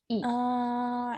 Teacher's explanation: the bulk of the tongue is very far forward and up